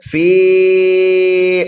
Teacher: فی کے بعد میں جو حمزہ آ رہا ہے اس کی وجہ سے ہم فی کو کھینچ کر کے پڑھیں گے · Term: مد منفصل